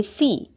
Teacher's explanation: لا کھڑی زبر ہے، الف مدہ کے قائم مقام ہے، ایک الف کے برابر لمبا ہوگا۔ فا متحرک ہے، زیر کو مجہول نہیں کریں گے، فے نہیں کریں گے، فی۔